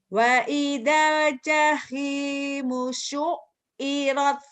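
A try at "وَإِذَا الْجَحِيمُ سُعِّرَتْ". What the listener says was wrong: Udah bisa, cuman ainnya belum keluar sama taknya nih ya.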